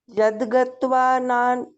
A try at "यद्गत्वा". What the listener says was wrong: आपका कहाँ गलती आ रही है, आप ना या द पूरा गा रहे हो, द आधा है, हलंत द, यद, यद। ठीक है, गत्वा। अभी थोड़ा सा बड़ा कर दो, आ की मात्रा ना व के साथ, यद गत्वा